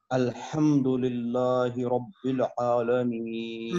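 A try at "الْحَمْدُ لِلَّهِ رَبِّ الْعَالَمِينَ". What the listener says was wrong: للہ کو موٹا نہیں کرنا، للہ کو باریک پڑھنا ہے. لفظ اللہ کے لام سے پہلے زیر ہے تو اس کو باریک پڑھنا.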